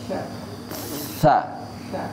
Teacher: Bapak mengucapkan sa tapi dengan lidah yang nempel di gigi, bawah gigi seri atas.